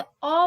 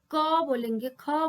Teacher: जैसे अ बोलने में कोई भी जो हवा है वो मुख विवर को कहीं भी स्पर्श नहीं कर रही है।